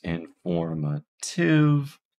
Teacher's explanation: You might notice here that I'm just using a regular O in informative, and that's usually because when O appears before L or R, it is not a diphthong. It is shortened, and it's just the O in this case. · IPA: ɪnfoɹmətɪv